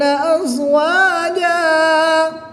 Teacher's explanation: 2 زبر کی تنوین کو وقف کی حالت میں الف مدہ سے تبدیل کر کے پڑھیں گے